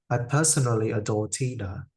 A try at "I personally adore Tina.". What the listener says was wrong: I wonder if you stressed the wrong word. I personally adore Tina.